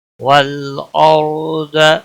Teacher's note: را ساکن سے پہلے زبر ہے، را کو پور پڑا جائے گا